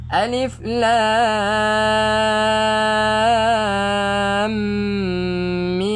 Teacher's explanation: Alif ni tak panjang lah. Lam ni kita panjangkan 6 harokat. Kemudiannya ada dengung di antara lam dengan mim. Panjangkan dengung 2 harokat. Kemudiannya mim ni kita panjangkan 6 harokat.